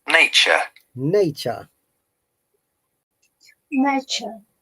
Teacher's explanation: remember in british accent there is no r an american accent there is r one more time nature nature